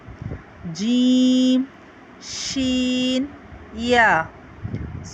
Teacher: जुबान के दरमियानी हिस्से से और ऊपर का जो तालू है उसके दरमियानी से इसको हम अदा करते हैं